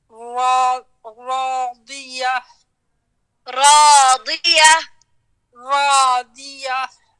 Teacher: ہم نے دال نہیں پڑھنا, ہم نے حرف الضاد بھارا پڑھنے